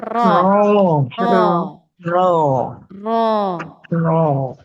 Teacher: huruf ro di sini adalah ujung lidah yang sangat dekat dengan gusi gigi seri atas sedikit lebih ke dalam dibanding nun jadi belakang lagi ya atau di punggung ee bagian punggung lidahnya ya.